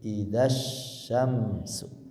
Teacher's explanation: Ini tulisannya panjang, praktiknya pendek karena bertemu dengan alif yang kedua